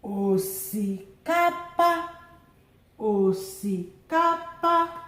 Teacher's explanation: low, low, high, high